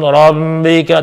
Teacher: Rabbnya jangan masuk hidung, Bu. Rabbika, tapi rabb seolah-olah putus.